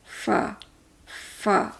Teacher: اوپر کے دو دانت ہمارے ہونٹوں کا اندر کا گیلا حصہ جو ہے اس کے ساتھ لگ رہے ہیں، اور اس سے لگنے سے آواز جو پیدا ہوتی ہے فا۔